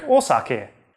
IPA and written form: osake (お酒)